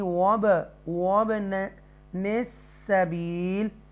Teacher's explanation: वाव को अदा करते हुए होंठ गोल होंगे